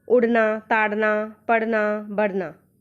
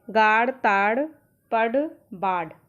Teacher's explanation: हमारी जीभ सिकुड़ती है और एकदम से दूसरी भाग की ओर फेंकी जाती है। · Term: उत्क्षिप्त व्यंजन